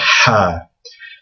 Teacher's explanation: It's almost like the sound that you make when you're taking off your glasses and you kind of blow from the back of your mouth to get to clean your glasses.